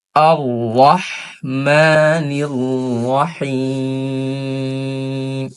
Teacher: তো এখানে কি, এখানে হচ্ছে আমাদের ছোট হা রয়েছে, এই জন্য আমাদের সুন্দর করে হা গলার মধ্যখান থেকে উচ্চারণ করতে হবে।